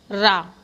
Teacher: इसमें मुख द्वार जीभ की नोक से शीघ्र ही बंद हो जाता है और 2-3 बार खुलता है